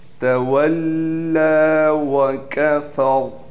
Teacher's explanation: یہ یا نہیں پڑھی جائے گی کیونکہ زبر زیر پیش نہیں ہے، یہ رسم الخط کی وجہ سے لکھی گئی ہے۔ تولا وکفر، کاف بھی باریک پڑھیں گے، فا بھی، لیکن را کو موٹا پڑھا جائے گا